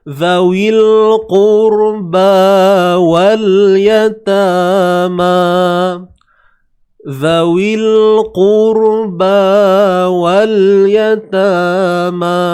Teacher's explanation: Sebelumnya ada huruf qaf yang berbaris hadapan, baris hadapan. Jadi automatik ra tu kena baca tebal.